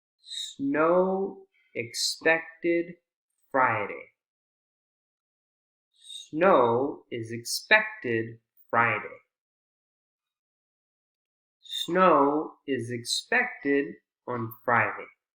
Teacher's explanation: still have three beats three strong beats for these content words even though we're adding function words